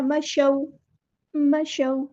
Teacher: یہاں پہ واو پہ مد لین ہو رہی ہے، نرمی سے موڑنا ہے